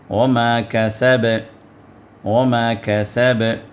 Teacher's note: اب وما کسب کے اندر چونکہ با پہ آپ جو ہے ٹھہر گئے، تو اس وجہ سے با کو قلقلہ دے کر اس کو پڑھنا ہے، تھوڑی سی حرکت دے کے پڑھنا ہے